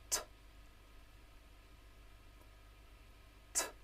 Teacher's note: Alveolar consonants are made by putting the tongue near or on the roof of the mouth. T, t is the unvoiced alveolar plosive.